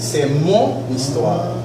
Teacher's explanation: C'est comme si la H ne se prononce pas. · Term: H muet